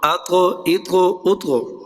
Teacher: جی اس کے بعد طا اور تا میں حمزہ زبر طا اطو، اطو قلقلہ بھی ہے اور مستعلیہ بھی، پر بھی ہوگا اور ہلا کے بھی پڑھیں گے